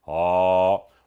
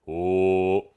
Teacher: o acento agudo indica que a vogal é aberta. Ó. O acento circunflexo indica que a vogal é fechada.